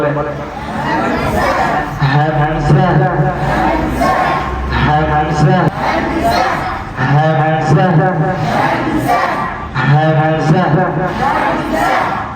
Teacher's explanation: এখান থেকে উচ্চারণ করতে হবে। তাহলে হলকের শুরু হইতে হামজা বলে